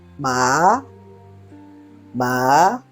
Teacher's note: is rising tone it is called ma ma you can see it started from lower pitch and then up immediately